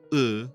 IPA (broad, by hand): ɤ